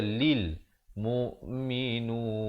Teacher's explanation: Tapi yang betulnya kalil. Lam baris bawah bunyi li, bukan bunyi le.